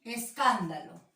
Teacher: está es, da y lo. Son las sílabas átonas, son las sílabas más suaves